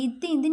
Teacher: இத்து இந்த அப்படின்னு சொல்லும்போது நம்ம நாக்கோட நுனி மேல்வாய் பல்லோட அடியை பொருந்தும்